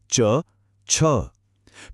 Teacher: अब अगली लाइन च वर्ग। इसके लिए हमारी जीभ ऊपर तालों को छूती है।